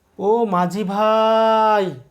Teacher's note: বিষয়টি বোঝানোর চেষ্টা করছি দূর থেকে ডাকার সময় ও মাঝি ভাই এখানে ভাইয়ের ই ধ্বনিটি প্রলম্বিত হচ্ছে বা বিলম্বিত হচ্ছে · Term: প্লতস্বর